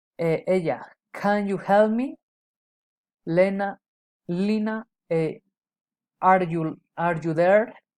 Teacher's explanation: Direct address, rising intonation.